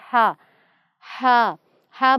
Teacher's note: ہا کی آواز درمیان والے حلق سے اور ہلکی اور نرم ہوتی ہے، یہ باریک پڑھا جاتا ہے۔ ہا ہا ہا باریک پڑھا جاتا ہے۔